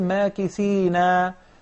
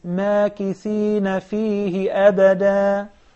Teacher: The fatha or the zabar, you see the fatha on top of the noon, is a shorter vowel of the alif, so don't prolong it unnecessarily.